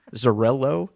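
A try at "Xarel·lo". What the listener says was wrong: No, it's like an SH. that double L with the dot floating is a thing that from Catalan, it's called the twin L.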